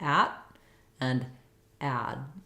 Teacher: Both T and D at the ends of words are often unreleased, so it would sound like at and add.